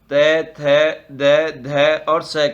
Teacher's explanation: दंत्य है त थ द ध और स का उच्चारण स्थान।